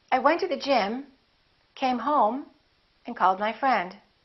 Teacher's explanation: rising intonation when you're not finished speaking and you have something more to say and then falling intonation at the end of your sentence